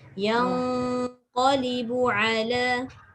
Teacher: Nun bertemu qaf, ikhfa. Dia tak boleh bunyi nun lagi. Dia kena bunyi dekat dengan tempat keluar qaf, iaitu pangkal lidah.